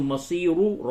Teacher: اگر آپ ملا کر کے پڑھتے ہیں تو مصیرو را کو پر کریں گے، لیکن جب را پہ وقف کیا جائے تو یہ قاعدہ ہے کہ رائے موقوفہ سے قبل اگر یا ساکن ہو تو وہ را ہر حالت میں باریک پڑھی جاتی ہے.